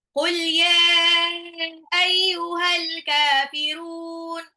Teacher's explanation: Ya-nya itu panjang, matobi'i bertemu dengan alif. Tidak dalam satu kata, tapi tetap dibaca panjang. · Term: mat wajib mutasil